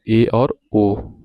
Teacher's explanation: अर्ध संवृत मतलब थोड़ा सा मुंह खुला रहे